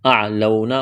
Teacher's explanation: واو لین ہے، کھینچنا نہیں ہے